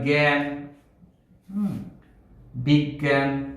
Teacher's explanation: জ আছে ইয় আছে, কিন্তু কোনোটির উচ্চারণ না হয়ে গয়ের উচ্চারণ হবে